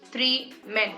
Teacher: spondaic, where you have two successive stressed syllables coming together.